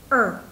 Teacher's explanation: trong tiếng Anh Mỹ thì người Mỹ thường hay cong lưỡi lên và đọc là ER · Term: âm ER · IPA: /3:/